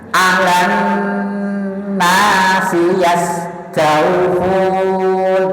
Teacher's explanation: Sinya kepanjangan, alannya kurang dengung.